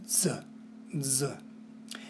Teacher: the letter Z, which is rare in Latin and only used to spell Greek words, sounds like it has a D in front of it.